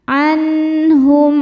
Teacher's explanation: Jadi asalnya bunyi nun ini adalah N. Kalau ketemu H tetap N tidak ditahan. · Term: izhar halq